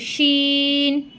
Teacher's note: এই শিনটা জিহ্বার মধ্যখান উপরের তালুর সঙ্গে লাগিয়ে উচ্চারিত হবে শিন।